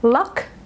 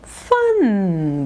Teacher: luck voiceless at the end fun voiced at the end